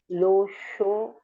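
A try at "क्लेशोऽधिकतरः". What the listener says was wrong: Not low.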